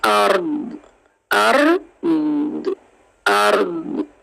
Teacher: ऊपर वो साइन आपको नजर आ रहा है स्टॉप का, वक्फ का साइन है, इसलिए हम वक्फ करेंगे और दौद की जेर को खत्म करके दौद को साकिन कर देंगे